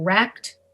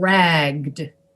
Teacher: you make the vowel longer too you make everything longer to get that d pronounced with your voice at the end